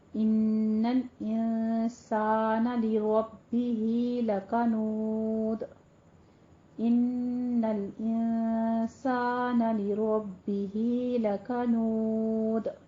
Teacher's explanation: دال پہ ہم ساکن کر رہے ہیں تو اس کو ہم قلقلہ کریں گے اور ربہ میں را پر پڑھیں گے